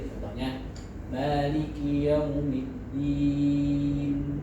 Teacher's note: kita wakaf dengan nun namun jangan sampai bibir kita tertutup karena kalau bibir kita tertutup nantinya pengucapannya menjadi mirip huruf mim